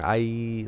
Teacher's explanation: It's a vowel sound that closes up, and so you end up going I, like it. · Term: diphthong